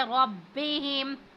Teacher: را پر زبر ہے، اس کو پور پڑھیں گے